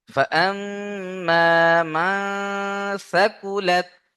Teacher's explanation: কারণ নুন সাকিনের পরে ইকফার 15টি অক্ষরের মধ্যে সা রয়েছে, ভালো করে দেখেন। তাহলে নুন সাকিনের আওয়াজকে নাকে তুলে একালিফ গুণনা সহ পড়তে হবে।